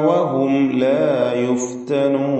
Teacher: സാക്കിനത്ത മീമിനെ ഇൽഹാർ ഷഫവി നൽകി മണിക്കാതെ വെളിവാക്കേണ്ടതാണ്